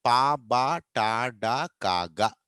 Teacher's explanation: ఇవి పలుకుతున్నప్పుడు గాలి ఒకటేసారి బయటకు వస్తుంది